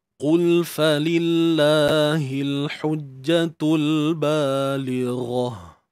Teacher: untuk huruf qaf di sini kita perlu baca dengan tafkhim, iaitu sifat yang tebal. Dan untuk mendapatkan sifat yang tebal ni, kita kena lakukan satu perbuatan, iaitu dengan mengangkat pangkal lidah.